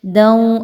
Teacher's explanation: دوں، اگین دال پر 2 زبر کی تنوین اور اس کے بعد حرف واو، یہاں پر ادغام ود غنہ کا رول اپلائی کرتے ہوئے تنوین کی آواز کو واو کی آواز میں مکس مرج کرتے ہوئے پڑھیں گے